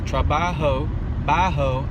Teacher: a breathy sound that comes out of the back of your throat